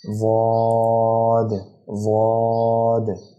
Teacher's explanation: واد کو بھی منہ بھر کے پر کر کے ادا کرنا ہے